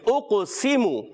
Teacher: قاف حرف قلقلہ سے بھی ہے اور حرف مستعلیہ میں سے بھی ہے, یعنی اس کو پر بھی کریں گے اور قلقلہ بھی ادا کریں گے, آواز لوٹ کر بھی آئے گی